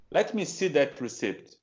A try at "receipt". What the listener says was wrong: Yes, and we pronounce this word, we pronounce it receipt. Without P, receipt.